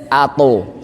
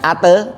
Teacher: Bukan kuat sih, agak tebel gimana ya. Suaranya ke atas. Ato. Bukan ate tapi ato. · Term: huruf to